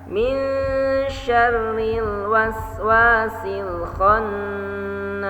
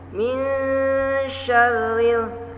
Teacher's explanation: di sini ada min dan nun tasydid bertemu shin, maka dibaca dengung, ditahan dengungnya